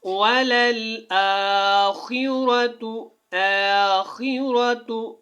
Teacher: خا کو پر، را کو بھی پر موٹا پڑھنا ہے